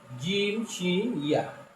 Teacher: জিহ্বার মাঝখান তার বরাবর উপরের তালুর সাথে লাগাইয়া